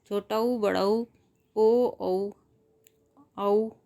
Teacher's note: जिन स्वरों के उच्चारण में होठों की स्थिति कुछ गोलाकार होती है ऐसे उच्चारित स्वरों को गोलीय कहते हैं